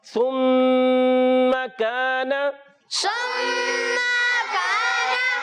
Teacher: میم مشدد میں ایک الف کا غنہ ادا کریں گے، سا کی ادائیگی کلیئر رکھیں گے، اس کو سین سے نہیں بدلنا۔